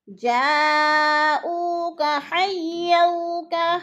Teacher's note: حیو پہ وہ لین ہے، اس کو لمبا بھی نہیں کرنا اور جھٹکا بھی نہیں دینا